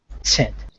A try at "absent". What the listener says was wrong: Yes, absent.